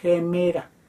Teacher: ejemplo también que comienza con vocal gemera tenemos la eta y sobre ella se pone el espíritu con la abertura hacia el interior entonces suena en forma áspera con un sonido de j